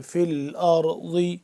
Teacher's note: را کو موٹا کر کے پڑھیں گے اور ضاد کو بھی موٹا کر کے